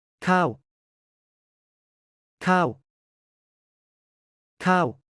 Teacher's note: ห้าง ห้าง ห้าง ข้าว Rice. Sounds like cow but start high and slide down.